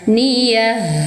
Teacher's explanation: ta marbuto diganti menjadi suara ha. Alirkan suaranya ha.